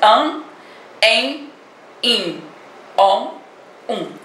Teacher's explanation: o M ou o N estão nasalando a vogal, ou seja, dando som nasal a ela. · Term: dígrafo vocálico